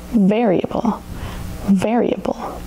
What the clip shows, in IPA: vɛ ri ə bəl